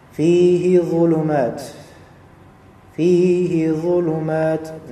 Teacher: Lihat di sini fihi, fa di sini harakatnya kasrah bertemu dengan ya mati, maka dia menjadi mad tabi'i dua harakat